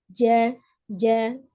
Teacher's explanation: tengah lidah bertemu dengan langit-langit bagian atas ya. Ja, ja, seperti itu ya. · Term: huruf jim